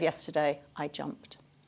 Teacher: That t suffix at the end of jumped is very brief.